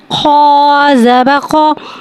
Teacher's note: खौ को एक अलिफ यानी 2 हरकत के बराबर खींच के पढ़ेंगे। खौ हुर्फ़े मुस्तआलिया है, लिहाजा इसकी आवाज़ हलक से मोटी अदा होगी। खौ पे ज़बर है, ज़बर को मुखोल के अदा करके पढ़ेंगे।